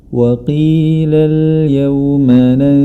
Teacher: Terdapat nun sukun bertemu dengan huruf sin, maka haruslah dibaca dengan samar. Samar di sini pengertiannya adalah antara idgham dan izhar, dan juga disertai dengan gunnah.